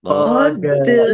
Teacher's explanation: Qad dal sukun bacaan qalqalah dibaca memantul, ditampakkan pantulannya